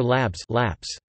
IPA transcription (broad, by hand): ˈlaps